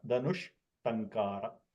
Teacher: This visarga, because its next letter starts with a murdanya, the visarga will become murdanya shakara